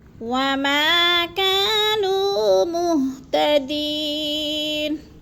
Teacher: وما کو بھی لمبا کرنا ہے، الف مدہ ہے، کا کو بھی لمبا کرنا ہے، نو کو بھی لمبا کرنا ہے۔